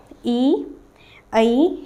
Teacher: इन स्वरों के उच्चारण में मुंह जो होता है सबसे कम खुलता है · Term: संवृत स्वर